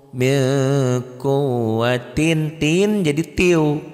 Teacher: Bunyi N-nya hilang karena nyambar ke sini ya.